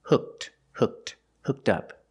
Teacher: If I change the verb to past, ed is pronounced with a t sound.